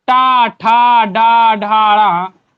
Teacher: इनका उच्चारण स्थान मूर्धन्य होता है, जिसे आप मूर्धा बोलते हैं। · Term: टा वर्ग